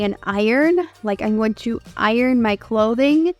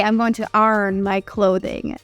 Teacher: unlike the New York City accent in the South they really pronounce the RS